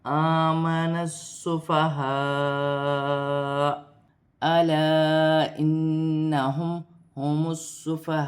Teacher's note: وقف کی صورت میں تو پر وقف کی جائے گی، وقف کی صورت میں حمزہ پر پیش کی حرکت ہے، پیش گر جائے گی اور حمزہ ساکن ہو جائے گی، اور ہلکے جھٹکے کے ساتھ وقف کیا جائے گا